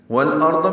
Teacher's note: والارض میں اظہار قمری ہے، لام پڑھا جا رہا ہے. را اور ضاد دونوں پر ہیں.